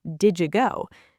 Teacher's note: merges the D and Y sounds to create a J sounding like did you go? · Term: sound transformation